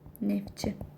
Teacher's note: Samit gəlsə t düşür. Məsələn, neftçi olacaq.